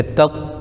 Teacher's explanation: تا پر زبر لیکن طا پر تشدید ہے تو تا کو طا میں ملائیں گے